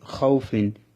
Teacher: লিনের হরফের পরে যে অক্ষরটি রয়েছে ফা, ফার মধ্যে দুই জের। আমি দুই জের সহ উচ্চারণ করতেছি খাউফিন। এখানে ওয়াওটাকে টান দিই নাই